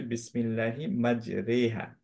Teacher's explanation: রিহা তখন পড়তে হয় না, রেহা পড়তে হয় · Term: ইমালা